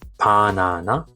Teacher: It should be B, but more closer to P. It's a soft like P in spin.